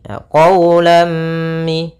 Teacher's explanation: suara tanwinnya dimasukkan kepada huruf mim sehingga dibaca dengan jelas. Dibaca dengan idgham, yaitu dimasukkan lamnya sambil ditahan di huruf mimnya. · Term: idgham bi gunnah